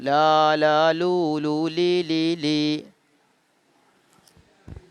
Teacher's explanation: നാവിൻ തലയുടെ അരിവും മേലെ മുൻപല്ലുകളുടെ ഊനുകളും ചേർത്ത് പറഞ്ഞാൽ ലാം ആയല്ലോ